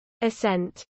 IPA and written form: əˈsɛnt (assent)